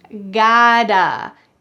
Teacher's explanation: In American English, the t changes to a d.